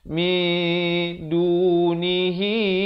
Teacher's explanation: Asalnya min baru bertemu nun jadi min, tapi bila datang dal, kita samarkan bunyi nun itu di antara huruf bunyi dal. Nak kata nun pun tidak, nak kata dal pun tidak, 2 harakat. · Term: ikhfa hakiki